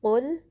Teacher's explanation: قوف کو لام سے ملانا ہے اور ضمہ کے لیے ہونٹوں کو صحیح سے گول کرنا ہے اور قوف کو پر بھی پڑھنا ہے۔